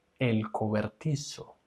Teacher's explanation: La pronunciación de la Z en Latinoamérica es como una S.